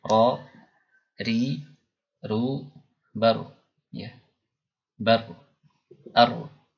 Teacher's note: ujung lidah menempel ke gusi atas, ya. Dan getarannya ini tidak boleh terlalu banyak, hanya satu atau dua getaran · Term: at-takrir